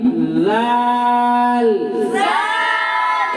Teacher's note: زبان کی نوک اور ثنائے علیہ کا کنارہ